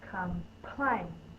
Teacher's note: You put a lot of force when you say the syllable plain. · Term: stressed syllable